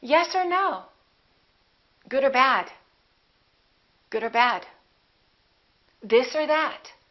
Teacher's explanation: Let's look at what happens to or. Or becomes just a consonant We don't say yes or no.